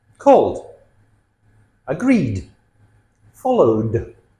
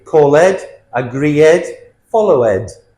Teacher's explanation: Notice the D sound at the end. We never say ed.